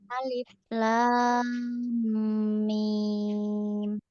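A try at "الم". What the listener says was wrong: Kurang panjang lam sama mimnya.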